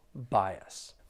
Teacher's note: There are two syllables. The stress is on that first syllable.